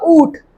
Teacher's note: तो ये ऊंट हमारे मुंह से भी इसका स्वर आ रहा है। नाक पे से भी इसका। तो उ प्लस चंद्रमा की मात्रा और प्लस ट ऊंट। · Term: चंद्रमा बिंदु